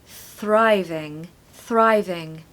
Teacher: we want to stress the first syllable